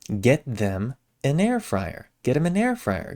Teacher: a in an also gets reduced. It ends up kind of sounding like an I in in.